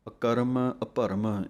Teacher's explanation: ਰਾਰਾ ਪੂਰਾ ਨਾ ਬੋਲਿਆ ਜਾਵੇ, ਧਿਆਨ ਰੱਖਣਾ ਹੈ। ਇਸ ਕਰਕੇ ਅੱਧੇ ਰਾਰਿਆਂ ਦੀ ਆਵਾਜ਼ ਹੀ ਬੋਲਣੀ ਹੈ।